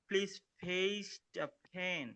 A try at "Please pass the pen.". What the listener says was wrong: Pass. Please pace na pass. Please pass the pen.